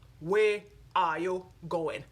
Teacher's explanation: we in the Caribbean we speak down in our chest